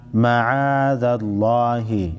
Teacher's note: लफ्ज़ अल्लाह के लाम को मोटा पढ़ेंगे।